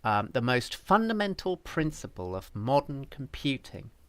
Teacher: i would say the word the is not stressed